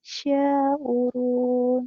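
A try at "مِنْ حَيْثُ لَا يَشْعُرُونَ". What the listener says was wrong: Yas. Di sini ada ya. Di sini ya. Ya digandeng sama shin. Yash. Tapi satu kali nafas. Min haitsu la yash'urun. Di sini la-nya panjang. La. Min haitsu la yash'urun.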